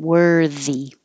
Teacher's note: make sure you keep your voicing on you already have it on for the were and you will have it on again for the E so just keep it on the whole time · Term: voiced